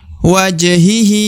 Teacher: huruf hi yang di ujung dibaca 2 harokat karena terdapat alif kecil di bawahnya yang merupakan tanda 2 harokat dan harokatnya harokat bawah atau harokat i, maka dibaca hi dan dipanjangkan 2 harokat.